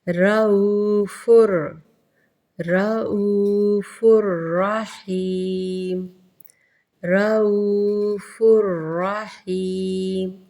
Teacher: تنوین کو ڈائریکٹ ہم را سے ملائیں گے اور غنّہ نہیں کریں گے۔ رؤوفر، رؤوفر رحیم، رؤوفر رحیم، دیکھیں کہیں پہ بھی آپ کو غنّے کی آواز آ رہی ہے لیکن ادغام کیا جا رہا ہے۔